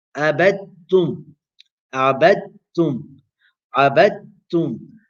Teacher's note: Dal is sakina, ta is mutaharrika, you do idgham.